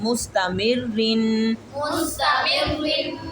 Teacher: मीम को र के साथ मिलाकर फिर र को बारीक